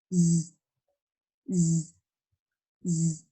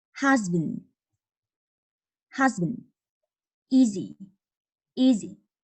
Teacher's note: There is some contact between the tongue and the teeth at the side of your mouth too. Z is different from s because there is voicing, vibration from the throat. You can put your fingers on the larynx to feel that.